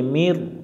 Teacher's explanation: নুন সাকিনের পরে এখানে র অক্ষর আছে, রটা ইদগমের অক্ষর। নুন সাকিনের বাম পাশে র অক্ষর পাইলে রয়ের উপর তাসদিদ ধরে গুণনা সারা পড়তে হয়। এটা গুণনা করা যাবে না, গুণনা সারা পড়তে হবে।